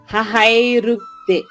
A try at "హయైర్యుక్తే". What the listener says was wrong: హ ఒక అక్షరము, యై రెండవ అక్షరము, ర్యు మూడవ అక్షరము. హయై యై అనండి.